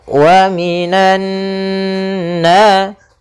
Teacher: Kemudian pada lafal nunnya di sini ada bacaan gunnah, yaitu nun yang berharakat tasydid. Maka cara membacanya yaitu suara nunnya atau suara n-nya ditahan. Wa minan sepanjang 2 harokat.